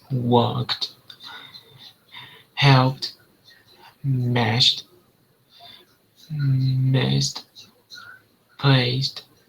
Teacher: when it's an unvoiced ending sound, it makes the T. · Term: the T sound